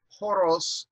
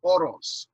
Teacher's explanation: they had an h sound that came just before vowels without any consonant before it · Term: rough breathing